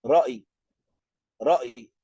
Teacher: Acentuamos, entrecortamos en el medio y queda el sonido de la ya después.